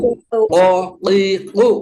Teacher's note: bunyi huruf qaf keluar dari pangkal lidah dekat dengan kerongkongan ya, yang dihimpit ke langit-langit mulut bagian belakang